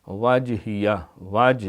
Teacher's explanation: وج جیم کے اوپر کلکلا ہے